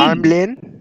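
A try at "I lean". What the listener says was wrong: এম হবে না, আই লিন হবে।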